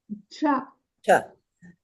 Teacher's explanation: we don't put an H on it because it's not aspirated. It's the hard unaspirated version.